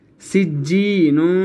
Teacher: جس یا کے اوپر سکون ہو اس سے پہلے والے حرف کے نیچے اگر زیر ہو تو اس حرف کو ہم نے ایک الف کے برابر کھینچ کر پڑھنا ہوتا ہے، ٹھیک ہے۔ اب ہم نے جیم کو ایک الف کے برابر کھینچ کر پڑھا